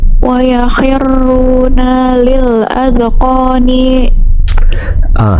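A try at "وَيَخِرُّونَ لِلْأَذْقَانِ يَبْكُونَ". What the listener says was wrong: Akhir ayatnya, maaf, akhir hurufnya jangan dipanjangin kalau nggak panjang. Wa yakhiruna lil adqani yabkun.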